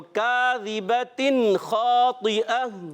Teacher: اظہار حلقی میں غنہ نہیں ہوتا, بغیر غنے کے ادا کریں گے